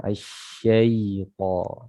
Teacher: Ini huruf shin, ya, dia memiliki sifat namanya at-tafashi, ya, makhrajnya dari tengah lidah, ya, tengah lidah ketemu dengan langit-langit yang sejajar dengan di atasnya